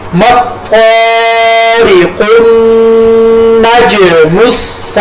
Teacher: सबको गठा मिलाकर पढ़ेंगे, मत्तारिक़ुन, नज मुस्साक़िबू, یہاں پر میں نے تو کو پر ادا کیا، تو کے ساتھ الف مدہ کو ایک الف کے برابر لمبا کیا، قاف کو پر ادا کیا، نون تشدید کی وجہ سے، شد کی وجہ سے نون کے اوپر غنہ کیا، جیم ساکن کی وجہ سے حروف قلقلہ ہے، جیم کے اوپر قلقلہ کیا